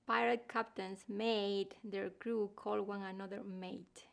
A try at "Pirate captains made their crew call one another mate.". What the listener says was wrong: Good, good.